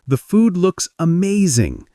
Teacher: Energy rises at amazing, expressing enthusiasm.